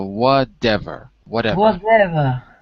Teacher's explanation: in American English the T becomes a d like dog so whatever whatever whatever yeah if you're using American